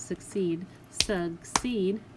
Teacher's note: And when I clap out succeed, succeed, the break is here, and you notice my long E sound is in my second syllable